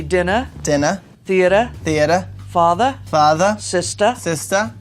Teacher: In Boston, we're going to drop the R.